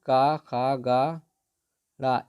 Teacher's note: का खा ग ड़ इनका उच्चारण स्थान कंठ से होता है